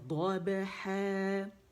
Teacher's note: دال موٹی نہیں ہے، یہ ضاد موٹی ہے